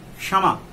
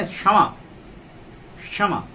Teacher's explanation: छ बोल देते हैं लेकिन नहीं आएगा, क्षमा, है ना, क्षमा, क्षमा मूर्धा से लेकर के बोलेंगे, है ना, चूंकि मूर्धन्य श इसमें है